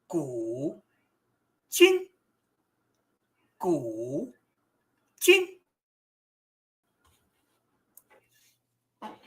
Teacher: The I is a second tone. It is a rising tone. So it sounds like almost like you're asking a question.